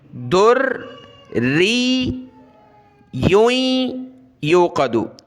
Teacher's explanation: تو را کو اور یا کو سخت کرنا ہے. اس یا کو سخت کرتے ہوئے ناک میں آواز پیدا کرتے ہوئے آگے ملا دیں گے. ہجا دیکھیں، دال را پیش در، را یا زیر ری، یا دو پیش یویں، یا واو پیش یو.